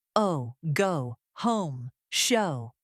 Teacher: Next, let us look at the long O sound, as in go, home, and show. Again, the vowel begins more open and then glides inward